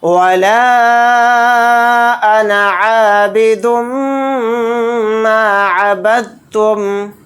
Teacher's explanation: دال کو سائلنٹ کر دیں گے تا پر تشدید ہونے کی وجہ سے، با کو ڈائریکٹ تا کے ساتھ ملا کر پڑھیں گے، دال کے ساتھ نہیں ملائیں گے